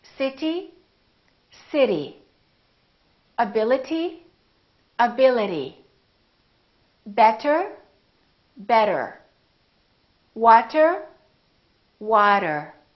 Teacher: the T didn't really sound like T, T. No, it didn't. It sounded more like a D sound